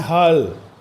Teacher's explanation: ह तो पूरा बोलना है लेकिन ल आधा बोलना है